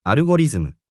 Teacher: Japanese doesn't distinguish between L and R. They both become R.